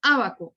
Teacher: tenemos, por ejemplo, aquí un acento en la antepenúltima sílaba, tenemos el ejemplo de la palabra ábaco. Yo no digo ni abaco ni abacó, digo ábaco.